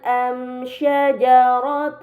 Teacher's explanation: Karena mim sukun bertemu dengan huruf selain ba dan mim, maka mim sukun harus dibaca secara jelas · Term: idhar syafawi